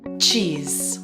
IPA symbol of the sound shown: tʃ